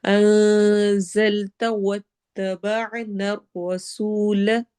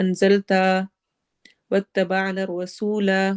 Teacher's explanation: تا کو لمبا نہیں ہونے دینا